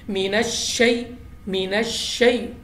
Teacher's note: لام کو ہم نے باریک آواز ساتھ پڑھنا ہے، اعوذ باللہ من الشیء، شیء یہاں پہ یا ساکن سے پہلے زبر ہے تو ہاں یہ ہے یا لین، تو لین حروف کو ہم نے یا لین کو بغیر کھینچے بغیر جھٹکے دیے نرمی سے پڑھنا ہے